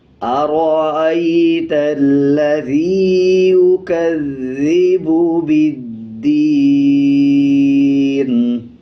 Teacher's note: نون کے نیچے زیر ہے، جب وقف کریں گے یعنی آیت کمپلیٹ کریں گے تب نون کا زیر سائلنٹ کر دیں گے اور نون کو آدھی آواز کے ساتھ پڑھا جائے گا